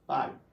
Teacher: na nossa pronúncia, o A ele sai mais forte e o I bem mais fraco. Logo, o meu A é uma vogal e o meu I uma semivogal.